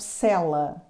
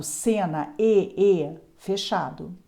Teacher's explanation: As vogais podem ser orais, com o timbre aberto ou fechado, como por exemplo cela. Cela é uma vogal oral com o timbre aberto, cela. E cena é uma vogal oral com o timbre fechado, cena, fechado.